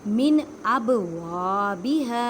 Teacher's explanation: اب با ساکن ہے اس وجہ سے یہاں پہ کلکلا کریں. کلکلا کا مطلب ہے ہلا کر پڑھنا. آواز واپس لوٹتی ہوئی محسوس ہوتی ہے